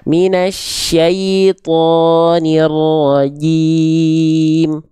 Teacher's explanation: Jim nggak punya sifat nafas mengalir atau percikan nafas